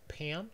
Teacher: in number three we find [pʰ] in 'pam' so preceded by the edge of a word and followed by the vowel [æ]